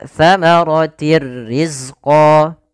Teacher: Idgham masuk artinya memasukkan bila ghunah tanpa disertai dengan gunah. Sehingga hanya masuk saja tanwinnya kepada huruf ro tapi tidak ditahan dengan gunah. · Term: idgam bila ghunah, idgham bila gunnah